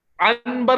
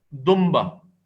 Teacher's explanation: पढ़ता अंबर दुंबा दुन बा नहीं पढ़ते इसको दुन बा नहीं नून साकिन की जगह यहां मीम साकिन पढ़ते हैं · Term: इकलाब